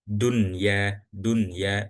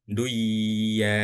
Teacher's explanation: karena kita diajarinya itu dibaca nunnya dan nggak langsung masuk ke huruf ya-nya. Dunya, dunya, bukan duya, bukan, ya, dunya gitu.